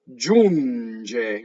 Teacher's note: Notice that the N goes into the G.